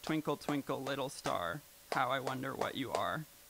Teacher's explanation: There's like an unstressed syllable between every stressed syllable. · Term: alternate stresses